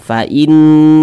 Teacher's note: maka kalimat Allah dibaca tebal. Nah, dibaca tafkhim.